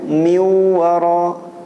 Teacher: sebab Nun atau tanwinnya sudah hilang tapi sifat dengungnya masih ada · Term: idgham naqis